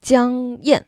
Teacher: Yan is the fourth tone drop